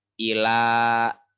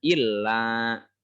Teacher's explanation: Irji'i panjang ila, awas. Bukan illa karena tidak ada tasjid.